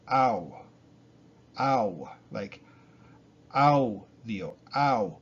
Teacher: you're going from ah to oo sound and you're swinging them together